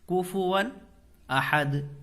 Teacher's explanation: تنوین کے بعد حروف حلقی میں سے کیا آ رہا ہے؟ حمزہ آ رہا ہے، تو نون کی آواز کو ظاہر کر کے پڑھیں گے، اظہار کا قاعدہ ہوگا۔